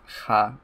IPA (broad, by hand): x